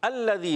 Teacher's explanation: الذی لام پر تشدید ہے، ذرا رک کر ادا کریں گے